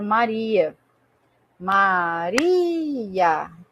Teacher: Então, o ri ele é tônico porque ele é mais forte. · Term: sílaba tônica